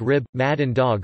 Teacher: the final /b/, /d/ and /g/ in words like rib, mad and dog are fully devoiced